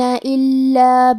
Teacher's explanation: کلمت الا میں حرف اللام پہ تشدید ہے تو ہمیں 2 حرف کے برابر لام کو پڑھنا ہے